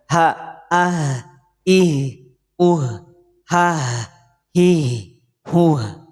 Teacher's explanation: hak kecil itu lebih kepada metodologi yang biasa kita pakai nah hak ini keluar dari mana makhrajnya dari pangkal tenggorokan